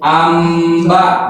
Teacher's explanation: nunnya diganti menjadi mim karena dalam makhraj mim dan ba itu berdekatan dan satu makhraj ya, yang asalnya dibaca anba jadi amba, jadi buat memudahkan pembacaan gitu, makanya diganti. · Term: iqlab